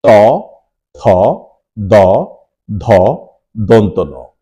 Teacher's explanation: ত বর্গের পাঁচটি বর্ণ উচ্চারণ করতে গেলে আমাদের জীভের ডগা এবং দন্তমূল এর ব্যবহার করতে হয়